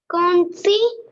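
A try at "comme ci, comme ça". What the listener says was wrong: Not corner. M sound. M sound. Kom. Si. Komsa.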